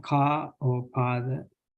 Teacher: a pronounced like as in car or father, but with a longer duration